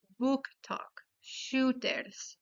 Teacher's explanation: En esta instancia la o se convierta en la vocal u de español.